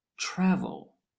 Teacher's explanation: the first syllable is stressed, the TRA, travel. The last syllable with L at the end is not stressed.